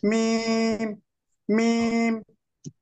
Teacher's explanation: মিমটা দুই ঠোঁটের শুকনো জায়গা থেকে উচ্চারিত